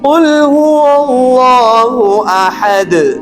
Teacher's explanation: اللہ کے کلمے سے پہلے زبر آ رہا ہے تو لفظ الجلالہ کو ہم موٹا پڑھنا چاہیے